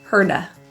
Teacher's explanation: The T in hurt is pronounced as a flap T or a quick D.